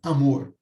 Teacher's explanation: nós temos duas sílabas a primeira composta de um único fonema uma vogal e a segunda sílaba composta de três segmentos consoante vogal e consoantes